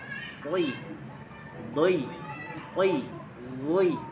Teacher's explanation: Dia dalam keadaan kasrah tetap tebal, berasa. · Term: huruf itbab